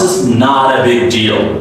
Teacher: T is D sound because before T there's a vowel and after T there's another vowel. There's an article vowel.